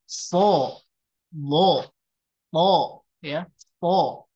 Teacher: Nah, adapun cara perbedaan membacanya adalah ketika kita mengucapkan huruf itbaq, maka bukan sebagian, hampir keseluruhan dari mulai pangkal sampai ke ujung permukaan lidah itu menempel ke langit-langit mulut sehingga menimbulkan karakter huruf yang sangat tebal